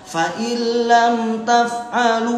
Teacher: Lam mim sukun menghadapi ta namanya izhar syafawi namanya. Taf'alu lu namanya mad asli ya, panjangnya 2 harokat, jangan kepanjangan.